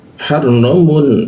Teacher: Mun bertemu ain tidak didengungkan ya, tapi jelas dia Munnya